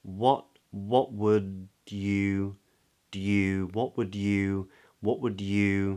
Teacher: the vowel in would is a short little vowel with rounded lips, w. Now that L is not spoken, so it's not wold, but it's just would with a D on the end, yeah.